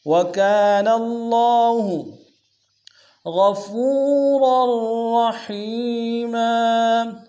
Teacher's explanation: دونوں را کو موٹا ادا کریں گے